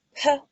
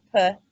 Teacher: aspirated, non-aspirated, are distinct phonemes in Dakota, but they are allophones in most students' L1s.